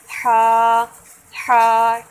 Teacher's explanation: जब हमने हा पढ़ना है तो हलक के सेंटर से आवाज़ आनी चाहिए